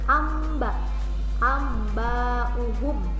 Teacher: Bunyikan ke suara mim. Amba, amba'uhum ya, ada mimnya. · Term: iklab